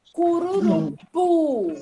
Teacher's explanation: a sílaba tônica a última então é uma palavra oxítona